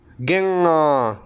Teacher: Tiene que sonar la nariz, tiene que vibrar o salir el aire por la nariz. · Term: nasal velar sonora